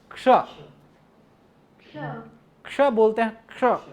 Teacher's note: और इसकी जब हम संधि करते हैं तो एक रहता है इसमें तालव्य शकार नहीं रहता है, ये मूर्धन्य शकार जो है वो रहता है